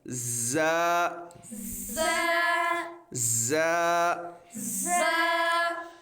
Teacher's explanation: زبان کی نوک اور دونوں دانتوں کے اندرونی کنارے سے یہ ادا ہوتا ہے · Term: حروف صفیریہ, حروف صفیری